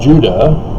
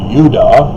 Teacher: look upon me the mormon messiah and isn't it interesting that judah is more correctly pronounced if you get rid of the european corruption of turning the semitic yod into the j sound so it would be udah oh that's almost